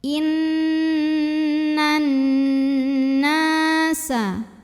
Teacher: Karena nun bertasydid, maka cara bacanya didengungkan, bunyi n-nya tahan sampai ada getaran halus ke hidung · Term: gunnah musyaddadah